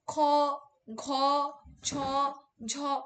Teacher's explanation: তুমি মহাপ্রাণ যখন দেখবে তখন খ, ঘ, ছ, ঝ প্রত্যেকটাতেই কিন্তু তোমার প্রাণবায়ু বেশি করে নির্গত হচ্ছে